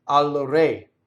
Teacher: Now, another interesting thing about re doesn't roll here because the shadow vowel. Usually an R touching a consonant would roll, but this one's not going to roll